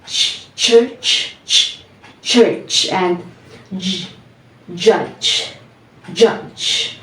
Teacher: we start from the sound stop and then release it as fricatives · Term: affricates